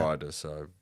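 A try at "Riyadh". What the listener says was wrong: No, it's not Rider. Radia. There's a Y in there.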